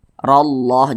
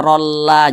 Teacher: lafaz Allahnya dibaca tebal maka Dibaca tafkhin juga Nah maka ini dibaca rallah jangan dibaca Rolla jangan tapi rallah